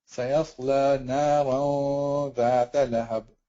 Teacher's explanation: You pronounce the gunna, but you don't pronounce the actual noon sound. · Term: ikhfa